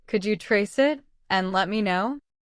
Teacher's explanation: Notice how trace it links together.